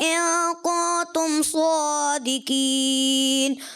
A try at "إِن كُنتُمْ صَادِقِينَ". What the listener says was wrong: جی ماشاء اللہ آیت اچھے انداز سے پڑھنے کی کوشش کی، قرنے وغیرہ تھوڑے متاثر. آخر میں ان کنتم صادقین، قاف جو ہے آپ کا پھر باریک ہوا، کہیں پر آپ کاف کو قاف کر دیتے ہیں، قاف کو کاف کرتے ہیں.